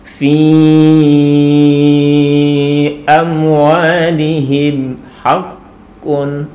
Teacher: Ketika di situ bukan mim dan bukan ba, maka disitulah kita akan baca idhar syafawi ataupun dibaca dengan jelas dengan bibir terkatup